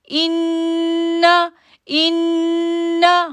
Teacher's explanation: جب بھی نون تشدید آئے گا تو وہاں پر ہم جو ہے وہ غنہ کریں گے